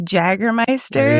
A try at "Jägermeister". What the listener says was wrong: And I'm like, why is that the one J that you pronounce and it's not correct? Because I was like, that's the one J. Because everybody else, you always say it with like the Y.